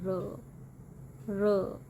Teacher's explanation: next one is ਅਪਰੋਕਸੀਮੈਂਟਸ, ਵਿੱਚ ਦੋ ਆਰਟੀਕੂਲੇਸ਼ਨ ਨੇੜੇ ਹੁੰਦੇ ਨੇ ਪਰ ਇੱਕ ਦੂਜੇ ਨੂੰ ਟੱਚ ਨਹੀਂ ਕਰਦੇ, ਇਸ ਲਈ ਕੋਈ ਵੀ ਫ੍ਰਿਕਸ਼ਨ ਜਾਂ ਬਲੌਕ ਨਹੀਂ ਹੁੰਦਾ ਤੇ ਸਾਊਂਡ ਸਮੂਥ ਵਾਊਲ ਵਰਗੀ ਹੁੰਦੀ ਹੈ